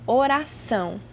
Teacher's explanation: A última sílaba é a mais forte, então essa palavra é classificada como oxítona